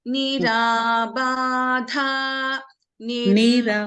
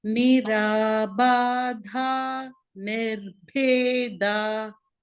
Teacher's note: Because in this word, in Nirabada, Ba is Alpa Prana, Dha is Mahaprana. When you come to Nirbheda, Bha is Mahaprana, Da is Alpa Prana, which is reverse.